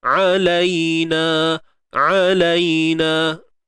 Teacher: Huruf ain di bahagian tengah kerongkong kita sempitkan.